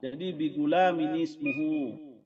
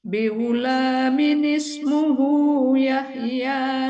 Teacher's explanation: Jadi apa tanwin ketemu alif tuh harus ada nun kecil, Bunda.